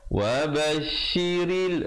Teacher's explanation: Kemudian ibtidak pada wabashiril mu'minin, wabashiril, ra-nya menjadi nipis, mu'minin, dan diwaqafkan dengan sekurang-kurangnya 2 harakat, 4 atau 6.